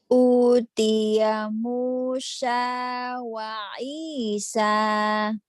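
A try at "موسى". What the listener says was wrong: Utiya Musa. S-nya biasa ya, bukan Musya. Musa, Nabi Musa, Nabi Isa.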